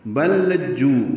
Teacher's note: لام کا لام میں ادغام ہو گیا، ادغام مثلین کہتے ہیں اس کو. 2 لام اکٹھے آ گئے ہیں، پہلا ساکن ہے دوسرا متحرک ہے، تو دونوں لاموں کو ملا دیں گے.